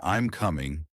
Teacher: if you're making a statement like I'm coming your voice usually Falls